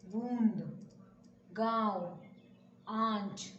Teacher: एक चंद्रबिंदु और उसका उच्चारण अनुनासिक होता है